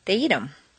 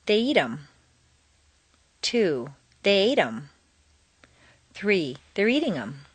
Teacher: Notice that in fluent speech, the th of them is frequently dropped